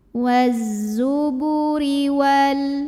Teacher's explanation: Huruf ra dibunyikan secara tarqiq karena ro-nya berbaris kasrah. Maka bacanya tipis, pangkal lidah datar ya. Ringan. Waz-zuburi wal.